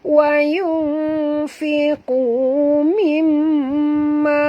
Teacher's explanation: Tawayunfiqu nun mati bertemu fa, ikhfa hakiki dengung dan sorokkan bunyi nun ke dalam fa disertai dengung. Wayunfiqu qu asli.